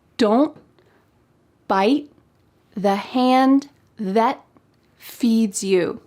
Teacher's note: In American English, oftentimes a T at the end of words will be cut off. We call this a stopped T because your mouth is making that shape, don't.